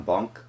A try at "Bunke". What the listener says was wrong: It's Bunky, sorry. It's because it's spelled Bunke, so you'd think it's silent, but it's not.